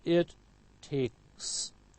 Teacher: K is voiceless, so followed by voiceless s